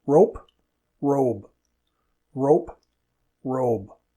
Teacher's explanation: Notice also how the /p/ or /b/ changes how long the vowel is. · At the end of a word, p is often not aspirated. It depends on the speaker. And b is not aspirated.